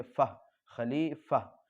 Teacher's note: یہ گول تا جو ہے وقف کی حالت میں ہائے ساکنہ بن جاتی اس لیے اس کو فا سے ملا کر پڑھیں گے۔